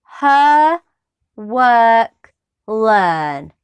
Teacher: the sound ah is voiced it's also known as an open mid central vowel now the open mid central part means that we keep the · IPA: /з:/